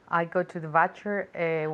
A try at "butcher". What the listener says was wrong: Not butcher, like a B sound. Be careful with the B sound in English because it's very, very strong, okay?